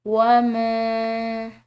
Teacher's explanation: وَمَا، یہاں پر میم کے بعد الف مدہ ہے، اس کو ہم ایک الف کے برابر کھنچاؤ دیں گے۔ ساتھ میں اس میم کے اوپر چھوٹی مد ہے تو اس کو مزید کھنچاؤ کے ساتھ پڑھا جائے گا